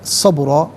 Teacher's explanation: قال انک لن تستطیع معی صبرا، اسے صبرن پڑھیں گے، وقف کی صورت میں صبرا پڑھا جائے گا کہ دو زبر کی تنوین وقف میں الف سے چینج ہو جاتی ہے